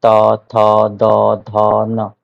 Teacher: जिनका उच्चारण ऊपर के दांतों पर जीभ लगाने से होता है · उच्चारण स्थान दंत होगा · यदि हम जीभ को ऊपर दांतों पर लगाएं तो उसका उन सब का जो उच्चारण स्थान होगा वो होगा दंत